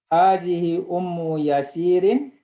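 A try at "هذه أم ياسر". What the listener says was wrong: Yasirin. Ya-nya panjang.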